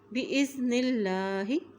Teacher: اللہ کے نام سے پہلے زیر آ گئی ہے اس لیے اللہ کا نام باریک عطا کریں گے